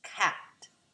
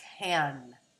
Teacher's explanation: So what happens when we produce can is that the tongue begins to move towards the placement for an sound and the velopharyngeal flap, which is closed during most consonant productions, begins to open on the vowel production to allow us to get the nasalization for the sound